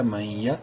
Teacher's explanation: الف کے برابر لمبا کریں گے، یہدی، میم یا زبر مئی، نون ساکن کے بعد یا حروف یرملون میں سے ہے، ادغام مع الغنہ ہوگا